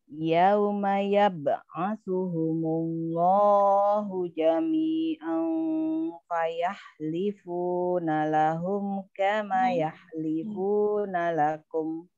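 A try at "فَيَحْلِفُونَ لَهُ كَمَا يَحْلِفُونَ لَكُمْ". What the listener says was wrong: Iya, di sini tadi lahum ya. Ada suara mim di sini. Harusnya panjang. Lahu kama yahlifuna.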